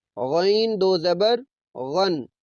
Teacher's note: غین کی آواز کو بھی موٹا کرتے ہیں